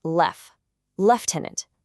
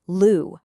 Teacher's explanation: the ending might sound a little different depending on if you're in the UK or the US, but the beginning sound is the key. It starts with lef, lieutenant, not lou.